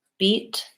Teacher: in the word beat we have a voiceless T which requires my word overall to be shorter